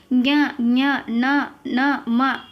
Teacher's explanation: ಇದು ಐದನೆಯ ಸಾಲಿನಲ್ಲಿ ಬರ್ತಕ್ಕಂತದ್ದು ಜ್ಞ ಞ ನ ಮ ಇವು ಮೂಗಿನಿಂದಾನೆ ಬರ್ತವೆ ನಾವು ಮೂಗು ಹಿಡಿದರೆ ಇವನ್ನ ಉಚ್ಚರಿಸೋಕೆ ಸಾಧ್ಯ ಇಲ್ಲ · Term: ಅನುನಾಸಿಕಗಳು